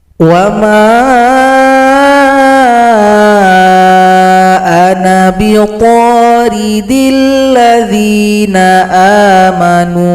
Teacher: Na dibaca pendek karena sifir mustatil menghilangkan tanda panjang ketika kita melanjutkan bacaan